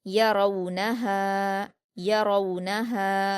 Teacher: रा पर वाउलीन है, इसको मारूफ आवाज़ के साथ जल्द पढ़ेंगे और पुर पढ़ेंगे। नून पर हरकतें जल्दी पढ़ेंगे, हा पर अलिफ मद्दा है, 2 हरकत खींचकर पढ़ेंगे।